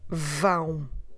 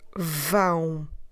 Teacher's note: the air flows simultaneously through your mouth, which is normal, but also through your nose. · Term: nasal